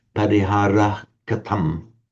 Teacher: In classical Sanskrit, it's just pronounced like an ordinary unvoiced H, parihara katam.